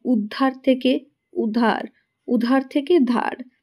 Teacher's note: এখানে আদিতে অর্থাৎ শুরুতেই স্বরধ্বনির লোপ পেয়েছি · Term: আদি স্রলোপ